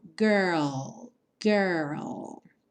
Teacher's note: depois você finaliza com o l l mesmo com a língua lá no céu da boca